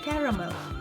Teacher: British English usually has 3 syllables with the stress on the first